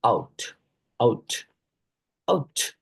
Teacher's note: it starts with an open front vowel sound like ah and glides to a near close back vowel sound like oo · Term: closing diphthongs